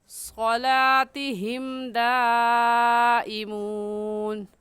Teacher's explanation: حروف مدہ کے بعد حمزہ اسی کلمے میں ہے، اگلے کلمے میں نہیں ہے، اس وجہ سے اس کو مد متصل اور مد واجب کہیں گے، اور اس مد کو 4 الف کے برابر کھینچ کر پڑھیں گے، نہ اس سے کم اور نہ ہی اس سے زیادہ۔